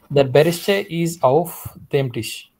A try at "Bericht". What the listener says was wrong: But it's not berishta. Berishta is plural. Berisht.